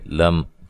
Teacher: لام کو باریک پڑھنا ہے، میم ساکن کا یہاں اظہار ہے، غنہ نہیں کریں گے، لم نہیں کریں گے، لم، ٹھیک ہے۔